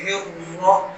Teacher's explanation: ہاں حالانکہ آخری حصے سے، اور آگے ہر، آگے را پھر پر ہے، را پر زبر ہے، پیش ہو تو موٹا ہوتا ہے، را کو یہاں پر بھی موٹا پڑھیں گے